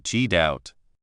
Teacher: The T sound at the end of get often disappears